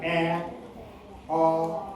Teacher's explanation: ए म्हणताना चंबू उघडते. ओ म्हणताना पुढे येते.